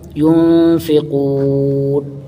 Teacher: قاف کو پیش پڑھیں گے، قاف کے اوپر ایک الف کے برابر کھینچیں گے ، حروف مدہ ہے، اور پڑھیں گے قاف کو، ينفقون، نون